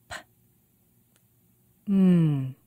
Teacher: We make both of those sounds by pressing the lips together, but they're very different.